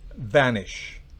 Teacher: se pronuncia con un labio, con el labio inferior y los dientes